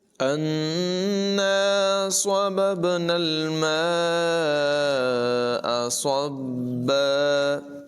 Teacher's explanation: نون مشدد میں غنہ ہوگا اور الف مدہ ہے، اسے لمبا کر کے بھی پڑھیں گے